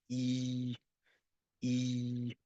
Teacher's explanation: You have a I sound in the letter E. But the letter E in French is a lot flatter